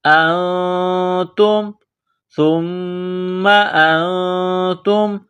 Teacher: نون ساکن کے بعد تا ہے، حروف اخفا ہے، غنہ کریں گے